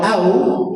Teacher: Nah, mulut saya tak muncung. Kalau waw ni, kalau mati ini kita perlu muncungkan dia. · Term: waw mati